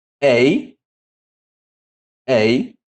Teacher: Então, esse aqui há uma mudança na pronúncia do epsilon, que de aberto passa a se tornar fechado